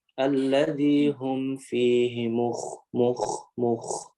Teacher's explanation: kho di sini kho-nya sukun sebelumnya dhammah tebal dia. Kondisinya harus tebal. Alladzi hum fihi mukh. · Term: tafkhim